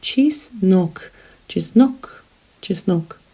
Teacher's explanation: The stress falls on the second syllable. There are only 2 syllables in this word.